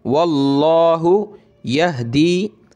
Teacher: लफ्ज़ अल्लाह से पहले वाव पे ज़बर है तो मोटा करेंगे